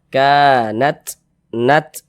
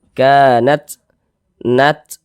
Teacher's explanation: Ketika kita mengucapkan huruf ta yang sukun ya, maka ada nafas yang mengalir ketika kita mengucapkannya. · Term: sifat hamas